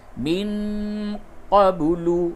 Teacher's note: نون ساکن کے بعد قاف اخفا کیجئے